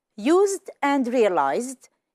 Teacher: even though it's written with an S and with a Z, we hear the sound Z.